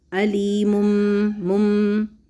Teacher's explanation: تو پھر آپ کریں گے یہاں پہ اقلاب، علیم بما کانوا۔ اقلاب کا مطلب کیا ہے کہ تنوین کی آواز، جو نون ساکنہ کی آواز تنوین کے اندر ہوتی ہے، اس کو ہم چھپا دیں گے، اس کو یعنی ہم پڑھیں گے میم کی آواز کر کے